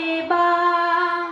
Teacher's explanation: আলিফের মাখরাজ হরফের শুরু হতে আ, দুই ঠোঁটে ভেজা হয়ে মিলিত করে বলতে হবে বা।